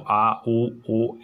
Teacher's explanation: अपने को एहसास होता है कि जो आवाज़ है वो जीभ के पीछे वाला भाग है वो कार्य कर रहा है , तो ये पश्च स्वर है, है ना। तो ऐसे बोलकर